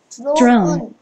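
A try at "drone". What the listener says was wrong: 드론. 살짝 세게 하는 거 아니야? 드론. 드론. 얘가 드론 이러냐? 드론.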